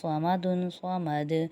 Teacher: صاد زبر صا، میم زبر ما، صما دال دو پیش دن، صمدن صمد۔ یہاں پر صاد جو حروف مستعلیہ میں ہے اس لیے اس کو موٹا پڑھیں گے